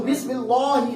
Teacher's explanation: اب یہ بسم اللہ میں لام باریک ہو جائے گا